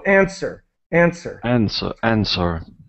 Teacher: the W is completely silent and the end of the word really ends with sir